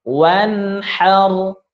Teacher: Ini huruf ha, maka tidak boleh dengung. Maka dijelaskan saja nunnya.